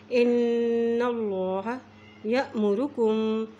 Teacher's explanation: नाम से पहले ज़बर है तो इसलिए यहाँ पर अल्लाह का नाम मोटा अदा करेंगे